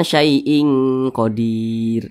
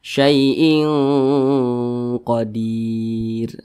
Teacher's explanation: ketika mengucapkan huruf qnya itu ditebalkan jangan syyaaiin Qodir Nah itu kurang tepat tapi ditebalkan syaaiin Qadir